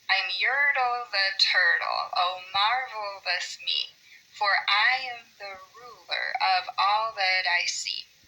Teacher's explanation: Because this one has two unaccented syllables between each accented syllable